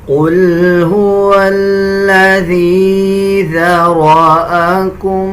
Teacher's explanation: اسی طرح آگے دیکھیں ذال کا مخرج صحیح ادا کیا جائے گا. اکثر لوگ ذال اور زا کو مکس کر دیتے ہیں، اس طرح پڑھنا غلط ہے، بلکہ ذال کو نرم پڑھا جاتا ہے. جب زبان کی نوک اب دونوں دانتوں کے درمیان لے کے آئیں گے تب ذال ادا کیا جائے گا.